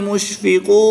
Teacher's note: زبر کو وقف کی حالت میں ساکن کر کے پڑھیں گے۔